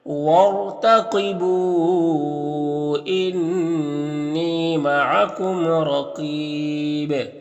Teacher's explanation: انی میں نون مشدد غنہ ہوگا، اور یا مدہ ہے یہاں پر. معکم کے میم میں اظہار شفوی ہوگا اور را کے اوپر زبر، را کو پر پڑھیں گے. · وارتقبوا را کو پر پڑھیں گے کیونکہ رائے ساکنہ سے پہلے حمزہ عارضی ہے. یہاں پر جو الف جو ہے اس کے نیچے زیر تھا، لیکن وہ زیر کیا ہے، گر گیا کیونکہ عارضی تھا، اس وجہ سے را کو پر پڑھیں گے.